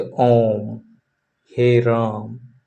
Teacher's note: Longest vowel. इनके उच्चारण में ह्रस्व स्वर से तीन गुना समय लगता है। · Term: प्लुत स्वर